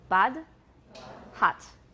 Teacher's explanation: In British, it's closer to ah. So, bud, hut.